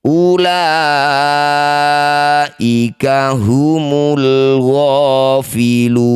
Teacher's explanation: Jadilah bacaan mad arif lukun. Lu panjangkan enam harakat huruf terakhir sukunkan. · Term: mad arif lis sukun